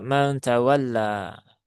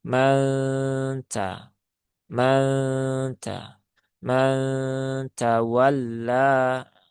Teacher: Cukup dibaca mantawalla. Padahal gunnah itu harus disempurnakan dulu ya kadarnya. Ditahan dulu 3 harokat, jangan tergesa-gesa.